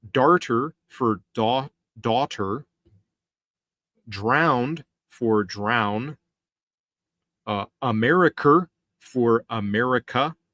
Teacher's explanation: so they add some R sounds at the end of their words